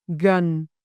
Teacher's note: This letter wear hat, circumflex. This sound is relaxed and deeper in the throat, similar to the sound in the English word but or huh.